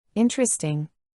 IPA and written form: ˈɪn.trə.stɪŋ (Interesting)